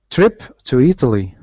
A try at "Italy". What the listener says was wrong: Okay, the only thing that was a little different was this Italy. Now, we actually pronounce it like an I. I know many languages pronounce it like E, but we pronounce it like Italy. Not Italy, but